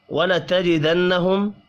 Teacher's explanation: نون مشدد پر غنہ کریں گے، میم ساکن کے بعد حمزہ ہے، اظہار شفی ہوگا، غنہ نہیں ہوگا۔